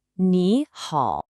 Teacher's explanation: Now, phonologically, what's so interesting here is the tone. Both of these characters technically have the 3rd tone, which is that falling, rising pitch.